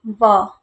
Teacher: तो व के उच्चारण में व, ऊपर के जो दांत है नीचे के होठ को स्पर्श कर रहे हैं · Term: दंत्योष्ठ ध्वनि